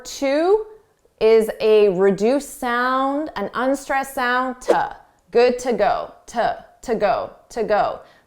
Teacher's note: to is a reduced sound. An unstressed sound.